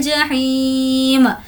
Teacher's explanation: ही को खींचेंगे क्योंकि या मद्दा है और मीम पर वक्फ कर रहे हैं इसीलिए इसको जज़म दे देंगे।